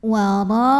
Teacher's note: Ada pada kata wara'a, satu kata. Maka dipanjangkan ra-nya ini boleh 4, boleh 5 harokat ya. Tidak boleh 2. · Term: mad wajib muttasil